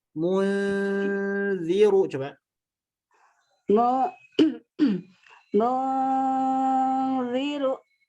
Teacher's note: Munzirnya jangan dimonyongkan pas gunnahnya. Monyongnya di mu saja.